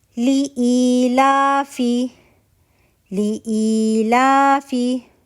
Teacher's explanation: ٹھیک ہے، ہر جو پہلی مدہ حمزہ اور مدہ بن رہا ہے وہ مد بدل بن رہا ہے. ٹھیک ہے، 2 کاؤنٹ ہم نے اس کو اسٹریچ کرنا ہے